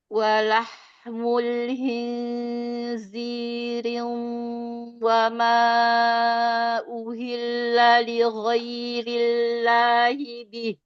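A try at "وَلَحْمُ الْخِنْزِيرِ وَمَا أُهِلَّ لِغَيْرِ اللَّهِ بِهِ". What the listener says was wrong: Roknya Kasroh, bukan kasrotain. Khinziri wama. Jadi bukan gunnah. bacanya riwa. Bukan idgham.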